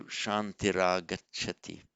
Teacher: with visarga, followed by a vowel. The visarga changes to r. So shantiragachati.